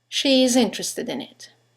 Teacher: there's a semivowel y that links the vowel at the end of she to the vowel at the beginning of it is